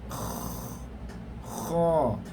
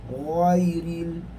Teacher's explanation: Cuma kha dengan ghain ni berbeza, dia adalah daripada sudut angin sahaja. Kha mengeluarkan angin. Manakala ghain dia tidak mengeluarkan angin. Ghairil, jangan baca khairil, khairil sudah jadi kha.